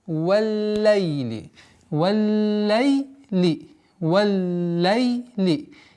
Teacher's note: Удваиваем лям с звука фатхи у буквы вау.